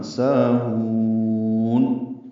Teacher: سا الف مدہ ہے، دو حرکات لمبا ہے ، ہون میں حاق سے حلق سے ادا کریں گے، لمبا